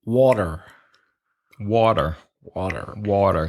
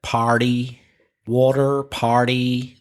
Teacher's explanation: So the T in some American English pronunciation becomes like a D sound